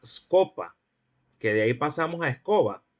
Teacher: ocurría una prótesis de la E, es decir, una prótesis del semicerrado anterior. Bueno, entenderemos por prótesis a la adición de un fonema al comienzo de la palabra.